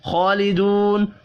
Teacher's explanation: खा खड़ी जबर की वजह से और दू वाव मद्दा की वजह से एक एक अलिफ के बराबर दोनों को खींच कर पढ़ेंगे। वफ़ की सूरत में नून साकिन पढ़ा जाएगा।